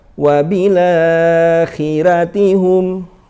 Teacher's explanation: Ra karena ro-nya dibaca tarkik. Sehingga bunyinya bukan ro tapi ra.